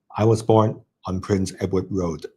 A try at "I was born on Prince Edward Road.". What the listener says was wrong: Okay, and then I would say it as, I was born on Prince Edward Road. So towards the end, there's a Edward Road. Prince Edward Road, Much bigger difference in the high and low intonation.